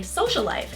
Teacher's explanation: I don't separate the words with a pause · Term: geminates